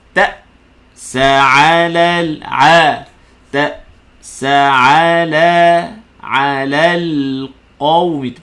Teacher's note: fala ta'sa, putuskan suara pada hamzah sakinah